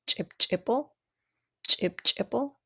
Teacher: So you can hear that breath holding and then the release of it. So that's the ejective sound.